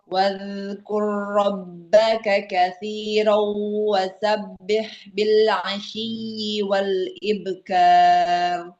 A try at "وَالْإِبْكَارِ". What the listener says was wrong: Jangan wal ibe, tapi wal ibkar. Ya, bacanya dia panjang pendeknya sudah bagus.